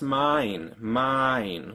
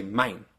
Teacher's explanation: the biggest differences between German and English D thongs is that the Germans tend to go faster to the second vowel